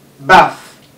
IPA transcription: ba:θ